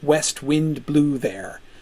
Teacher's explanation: That is what in technical poetic language we call spondi. That is several equally stressed syllables all kind of slapped in there together.